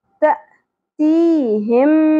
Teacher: زبر کے ساتھ حمزہ کے اوپر جزم ہے، جھٹکا ادا کیا جائے گا. تی یہاں یا مدہ ہے، ایک الف کے برابر کھینچنا ہے.